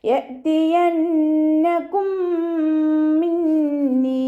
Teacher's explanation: സുക്കൂനായ മീമിനെ അടുത്ത മീമിലേക്ക് ലയിപ്പിച്ച് ഉണ്ണയോട് കൂടി ഒതിക്കൊടുക്കുക, മണിച്ചിട്ട് ഒതിക്കൊടുക്കുക കേട്ടോ. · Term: ഇദാം ഷഫവിയാണ്